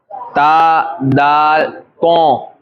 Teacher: سیرہ زبان اوپر کے سامنے والے دانتوں کی جڑ سے، سیرہ زبان یعنی نوک زبان، سیرہ زبان یہ اوپر کے دانت، اوپر والے، اس کے دانتوں کی جڑ اندر جائیے، اور جہاں سے دانت نکل رہا ہے وہ اس کی جڑ، تا، دال، تو، سب ایک ہی جگہ زبان لگے گی.